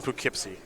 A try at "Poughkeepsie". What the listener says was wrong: Just Poughkeepsie. Don't pronounce it like a tourist. Just Poughkeepsie. You're like Po. It was a little bit too enunciated.